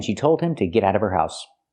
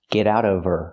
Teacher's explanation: Now we need the Vv sound in of because we don't pronounce the H in her. We link the sounds. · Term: The H is silent